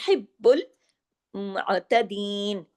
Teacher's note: बा पे तशदीद है ना तो डबल बा होगा · با پہ تشدید ہے نا تو ڈبل با ہوگا